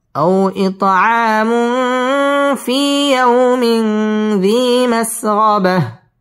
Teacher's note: আও জবরের বাম পাশে জজম ওয়ালা ওয়াও লিনের হরফ তাড়াতাড়ি পড়তে হবে